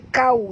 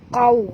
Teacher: huruf qaf tebal, jangan baca kau tapi baca qau